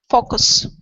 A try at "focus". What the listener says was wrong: Faux. Go quickly through that O into an oo. Don't push so much on the oo though. So you don't want to say foo. Faux. So it's an O. Faux. Focus. Okay, so you're saying you're going from an ah. Okay, so what you're doing is you're going from an ah to an oo. You're saying ow, foul, focus. Instead of ow, it's oh, oh.